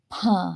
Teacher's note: ಭವನ್ನ ಸ್ವಲ್ಪ ಹೆಚ್ಚಿನ ಉಸಿರು ತಗೊಂಡು ಗಂಟಲಿನ ಒಳಗಿಂದ ನಾವು ಉಸಿರನ್ನ ಹೊರಹಾಕ್ತಿವಿ ಹೆಚ್ಚಿನ ಉಸಿರನ್ನ ತಗೊಳ್ತೀವಿ ಭಾ ಹೇಳುವಾಗ ಬಾ ಕಡಿಮೆ ಉಸಿರು ಭಾ ಹೆಚ್ಚಿನ ಉಸಿರನ್ನ